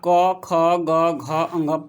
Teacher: देखिए, जैसे कि यहाँ पर है क वर्ग, तो क वर्ग आप क, ख, ग, घ, अंग पढ़ के बोल के देखिए, इसको प्रैक्टिकली आप करके देखिए, तो आपको लगेगा कि ये आवाज़ कंठ से निकल रहा है, तो इसलिए इसको कंठ व्यंजन भी कहा जाता है। इसका उच्चारण स्थान कंठ होता है।